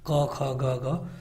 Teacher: क वर्ग वो जो कि कंठ से आते हैं, जैसे कि क, ख, ग, घ, तो ये कंठ और निचली जीभ से ये आते हैं